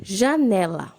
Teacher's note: Né é a sílaba mais forte, então ela é uma paroxítona, está na penúltima sílaba.